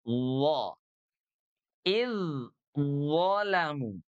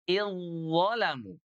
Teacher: Sama ya, yaitu ujung lidah yang bersentuhan dengan gigi seri atas. D idolamu maka keduanya langsung di leburkan, diidgamkan menjadi idzalamu.